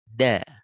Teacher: menyebutkan dal, ujung lidah belakang gigi. Da, lihat di layar, da ujung lidah belakang gigi.